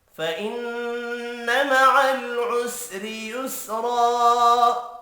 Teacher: فإن نون مشدد پر غنہ کریں گے، مع العسر را کو زیر کی وجہ سے باریک پڑھیں گے۔